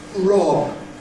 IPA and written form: rɒb (rob)